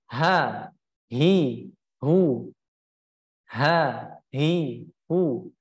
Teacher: Tadi mengalir nafas, yang mengikutinya yaitu mengalirnya suara. Jadi suara mengalir keluar, tidak tertahan suaranya. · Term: rohwah